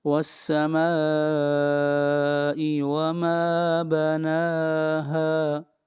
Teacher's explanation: یہاں پر مد متصل ہے، اس مد کو 3 الف کے برابر کھینچ کر پڑھیں گے